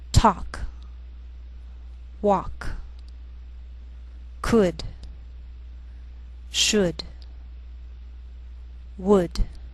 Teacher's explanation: sometimes L can be silent